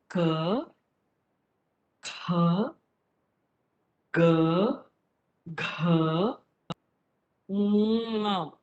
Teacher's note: So you see that the first 5 letters are all in the throat.